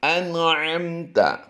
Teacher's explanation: نون ساکن میں بھی اور میم ساکن میں بھی ہم نے غنہ نہیں کرنا